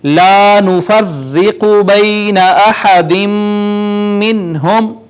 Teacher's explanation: احد منہم، یہاں پہ دیکھیے الف مدہ ہے، اس کے بعد را کے نیچے زیر ہونے کی وجہ سے اس کو ہم نے مرقق یعنی باریک پڑھا